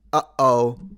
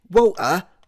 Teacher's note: Uh-oh, that's a glottal stop. So when you say British water, that's a glottal stop.